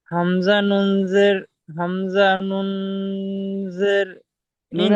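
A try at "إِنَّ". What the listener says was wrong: নুনের নুনের টানটা ভুল হচ্ছে। নুনের টানটা 20 খানে হবে। নুন। হামজা নুন জের ইন।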